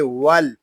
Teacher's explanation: واو لام زبر ول، یہاں الف جو ہے اس کو نہیں پڑھیں گے، واو کو لام کے ساتھ ملا دیں گے